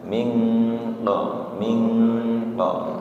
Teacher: ikhfa ketika nun sukun ketemu qof itu eng-nya lebih jelas